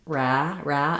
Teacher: I have the back of my tongue tight for the r and then the vowel follows